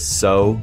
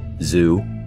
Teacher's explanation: voiceless so and voiced zoo